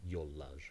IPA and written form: jollar (yollar)